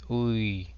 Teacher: Think of yes and isolate the Y from the word, making it short in length. Now pronounce U and slide into your Y, and we end up with Ui.